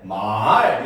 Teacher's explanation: 상성은 바로 뭐냐? 낮았다, 높아지는 소리입니다.